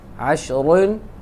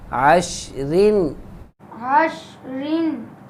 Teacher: جب ہم ملا کے پڑھیں گے تو را کے نیچے زیر ہے، را کو موٹا نہیں کریں گے